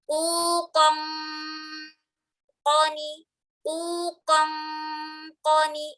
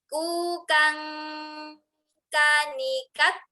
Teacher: Sama dengan yang qaf, cuman bedanya qaf itu tebal, bunyi ikhfanya, kalau kaf tipis.